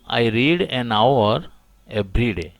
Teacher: the first letter of hour is H, but it remains silent